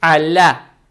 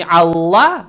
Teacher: Фатха приобретает оттенок я, то есть аля.